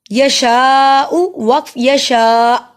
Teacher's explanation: اگر آپ غور کریں تو اینڈ پہ حمزہ کا ساؤنڈ آ رہا ہے